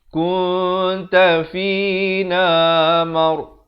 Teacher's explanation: Ra di sini jadi tebal. Mar bukan mar ya, tapi mar.